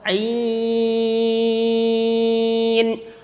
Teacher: Ta'in tidak boleh, karena ain bukan keluar dari rongga hidung tapi tenggorokan bagian tengah seperti ha kecil juga dan keluar dari rongga mulut